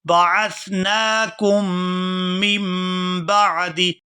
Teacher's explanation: ثم بعثناکم، بعثناکم، یہاں نون کے اوپر کھڑی زبر ہے تو اس کو کھینچ کر ادا کیا جائے گا، اور آگے کاف کو میم مشدد کے ساتھ ملائیں گے تو غنہ کریں گے